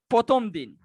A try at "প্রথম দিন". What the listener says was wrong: প্রথম দিন কেন? প্রথম দিন। রফলাটা উচ্চারণ করেন ঠিক মতো। প্রথম দিন।